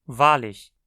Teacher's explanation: Perceba como agora o ich se colou na conjunção, formando com ela uma unidade que é pronunciada como uma palavra só.